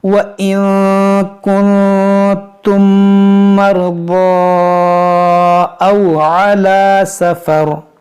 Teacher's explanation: نون ساکن کے بعد کاف حروف اخفا ہے، تو یہاں پر اخفا کریں گے